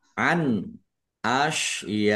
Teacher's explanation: nun sukun bertemu dengan huruf alif, bacaan izhar, dibaca jelas.